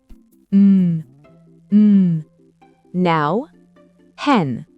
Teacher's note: Pour le son N, le bout de la langue touche les gencives supérieures, l'air sort par le nez